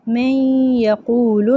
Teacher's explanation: नून का वाव में जब इदगाम होता है तो मुदगम की सिफत बाकी रहती है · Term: नाकिस